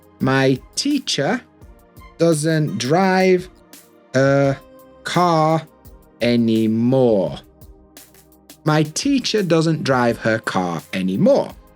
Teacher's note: We don't pronounce any of those Rs.